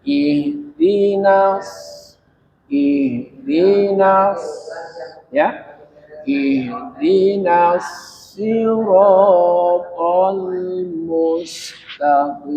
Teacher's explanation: sad bertasydid, sad bertasdid itu seolah-olah ada huruf sad yang mati di luar